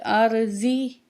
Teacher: را ساکن اس سے پہلے زبر، تو را موٹی پڑھی جائے گی